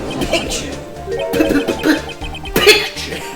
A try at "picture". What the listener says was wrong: Why are you pronouncing it like Draco Malfoy pronouncing the P in Potter?